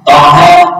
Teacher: Toha hukumnya adalah mat tabi'i karena panjangnya 2 harakat.